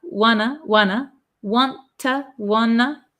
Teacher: want to is contracted to wanna because we get rid of these T sounds and then two usually becomes t, t.